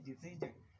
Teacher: So a stage 1 idan kuka ga waɗannan kalmomin sun ƙare da SION, yawancinsu suna ƙarewa da jin ake faɗa, ba sha ake faɗa wajen furta waɗannan ƙarshen ba. Jin, kamar nan za ka ce decision, don't say decision.